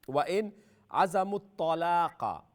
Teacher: تا بھی فل ماؤتھ ہے قاف بھی فل ماؤتھ ہے